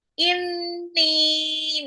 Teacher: Inni nunnya ghunna dan itu ada nunnya mad thobi'i bertemu dengan alif.